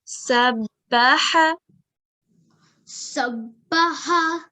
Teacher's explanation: Over here, this is a mushaddad letter, which has tashdid. So sabbaha, we will join it strongly, and ha, it will come from the throat.